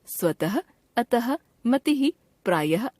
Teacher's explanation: विसर्ग एक व्यंजन ध्वनि है जिसका हिंदी में उच्चारण ह की तरह से ही होता है